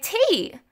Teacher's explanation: i heard you say t with the tapping sound